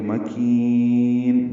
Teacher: مکین، میم کو جلدی پڑھنا ہے، کاف باریک ہے، کی یا مدہ ہے اور نون ساکن پہ وقفاً مد عارض للسکون ہے، کاف کو لمبا کریں گے.